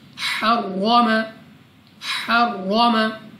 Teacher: रॉ पर ज़बर, रॉ को पुर यानी मोटा पढ़ेंगे, मुंह और आवाज़ को खोल कर